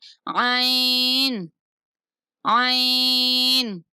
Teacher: عین حروف حلقی میں سے ہے اور وسط حلق اس کا مخرج ہے